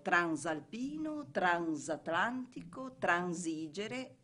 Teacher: nei vocaboli con il prefisso trans, la S di trans diventa dolce